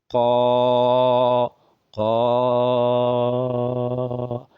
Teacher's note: the part of the mouth that the alif comes out from is the empty part of the mouth, empty part of the mouth down to the throat